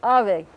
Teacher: This is another symbol taken from Greek called beta, accents on the first syllable, ave. This V thing that's written with a V in Spanish, it's not pronounced like an English V. It's a bilabial fricative.